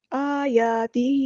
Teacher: آ اور یا دونوں کو برابر لمبا کرنے، دونوں پہ مد اصلی ہو رہی ہے